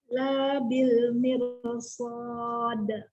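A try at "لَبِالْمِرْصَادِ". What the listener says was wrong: Lamnya tidak panjang, artinya nanti beda banget. Ayo, lanya pendek.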